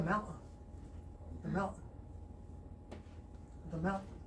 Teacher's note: it's a New York thing, it's culturally, that glottal stop is replacing the letter T.